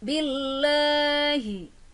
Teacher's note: Billahi, ada lafaz jalalah Allah, cara membacanya harus tarkik karena ada ba berharokat kasroh berada di depan lafaz jalalah Allah, dibacanya harus tarkik atau tipis